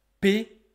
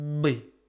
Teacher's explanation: P is very tense. B is very relaxed. So you can consider that P and B are just the tense version and the relaxed version of the same sound.